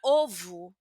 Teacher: Eh, y es algo parecido lo que pasa con la e, que es que ella va a cambiar de fonema. Entonces, palabras que terminan con o sin tilde van a tener un fonema como una u, una u suave. Entonces, no será eh una u fuerte y ni aberta ni cerrada.